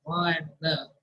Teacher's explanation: For lingual consonants like ma and na, they are resonating from the nasal passages.